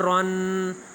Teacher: را کو دو زبریں ہوں تو موٹا پڑھیں گے